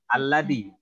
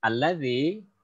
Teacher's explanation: tempat keluar hurufnya itu lidahnya diapit di antara dua gigi. Dal, zi, alladzi gitu ya. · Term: huruf zal